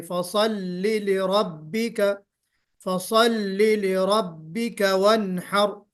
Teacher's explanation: لام کو باریک کر کے پڑھنا ہے، پر نہیں پڑھنا